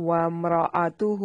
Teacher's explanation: وامرأتہ میم ساکن کو ہلانا نہیں ہے، را کو موٹا پڑھیں گے